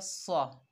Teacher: स्वाद जो है हुरूफ इस्ताला में से है, मोटा पढ़ाया जाएगा सौ। वाक़ीमुस, लाम के ऊपर खड़ा ज़बर है तो एक अलिफ की मिकदार खींच कर पढ़ा जाएगा ला।